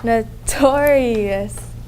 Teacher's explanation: There are 4 syllables and the second syllable gets the accent.